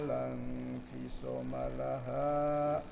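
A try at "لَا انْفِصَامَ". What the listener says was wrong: lam fi so-nya panjang.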